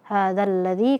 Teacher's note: Yuqalu hadzal ladzi, nah di sini alif lam samsiyah ya. Hadzal ladzi karena zalnya langsung masuk ke lam ya.